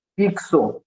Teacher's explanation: Fixo, ele vai ter o som de KS